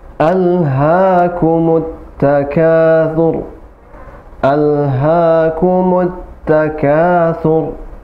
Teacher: ha tidak besar, tapi hanya hak kecil, bukan huruf besar, bukan huruf tebal, tapi huruf tipis. Alha, ha seperti kita mengucapkan matahari.